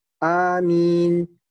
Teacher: alif dan mimnya itu dibaca pendek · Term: al-qasr